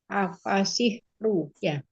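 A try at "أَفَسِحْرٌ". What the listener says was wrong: Ya, run itu run. Kalau bentuknya kayak gitu run, bukan ru.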